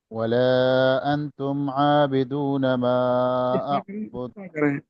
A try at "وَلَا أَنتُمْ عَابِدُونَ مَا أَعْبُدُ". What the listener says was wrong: اخفا کریں نا. انتم نہیں پڑھیں ولا انتم.